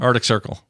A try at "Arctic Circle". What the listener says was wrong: Yeah, Ardic. Ardic is a very Utah, as far as I know, is a very Utah thing. Arctic Circle.